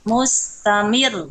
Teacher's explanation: Ro itu kan tawasut ya. Alirkan sedikit.